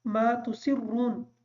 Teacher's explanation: ما تُسِرُّونَ کا جو را ہے اس را کے اوپر پیش ہونے کی وجہ سے اس را کو پر پڑھیں گے